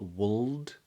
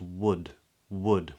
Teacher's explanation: that L is not spoken so it's not Wald but it's just wood wood with a D on the end